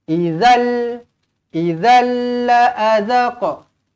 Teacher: Bila jumpa dengan lam, tak payah dengung, masuk sahaja. Idzal la'adzaqa, pendek.